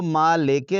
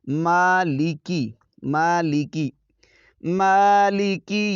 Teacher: مالک یوم الدین، مالکی، میم پر کھڑا زبر ہے، ایک الف کی مقدار کھینچ کر پڑھیں گے، اس کو مالکے نہیں پڑھنا، یعنی لام کے نیچے جو زیر ہے اس کو مجہول نہیں پڑھنا آپ نے، مالکے اس طرح نہیں، مالکی مالکی مالکی یو، آگے بہت سارے دوست جو ہیں وہ اس کو یو پڑھ دیتے ہیں، یو یو نہیں یو، یو پڑھیں گے اس کو یو، مالکی یوم الدین۔